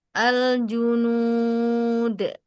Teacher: Angkat tengah lidah ju, nggak ada percikan angin. Al junud Buka tutup al junud.